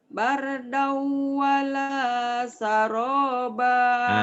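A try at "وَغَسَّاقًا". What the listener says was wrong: Hitam shinnya tuh. Bardau wala syaroba. Shin.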